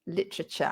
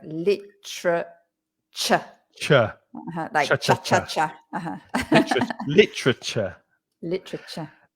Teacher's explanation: another one where we swallow the vowels